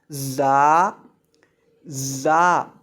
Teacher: زا کو جب پڑھتے ہیں تو زا کے اندر سیٹی پیدا کر کے پڑھتے ہیں، زا کی یہ صفت ہے۔